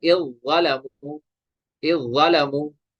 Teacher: ऐसे ही यहाँ पे ये हमजा जो है ये मुतहर्रिक है, जाल साकिन है, ज़ा मुशद्दद है, तो जाल को हम छोड़ देंगे